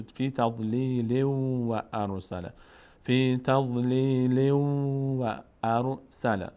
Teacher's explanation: و اگر اینجا ادامه دادیم چون تنوین بعدش واو آمده، اینجا چه اتفاقی میفته؟ تنوین بعدش واو آمده، ادغام میشه، یعنی به جای تنوین واو تلفظ میشه